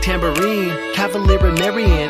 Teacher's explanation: two unstressed, stress syllables in succession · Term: anapest